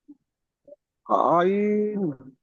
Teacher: আইন 3 আলিফ পরিমাণ টান দেন, 1 আলিফ নয়